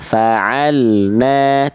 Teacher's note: semestinya fa'alna tidak ada bunyi le di bunyi lam sukunnya